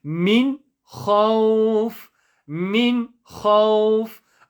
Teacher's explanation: Notice how I am not saying min. I'm not stretching it. I'm not praying it in the nose. I'm not making a light nasal sound. I'm saying min khawf.